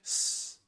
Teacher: You feel the sound, but it's not vibrating. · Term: unvoiced consonant